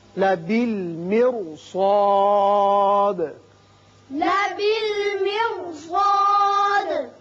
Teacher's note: اس لیے کہ سواد حروف مستعاریہ میں سے ہے اور حروف مستعاریہ موٹے پڑے جاتے ہیں، اس لیے را بھی موٹا پڑا جائے گا